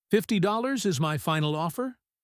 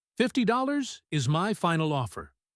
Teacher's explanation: This signals that the negotiation is over. If you use rising intonation for a final offer, it sounds like you are still unsure, and the other person might keep pushing. · When you make a firm decision, your intonation goes down. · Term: Falling intonation